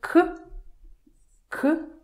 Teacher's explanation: Г without voice turns to К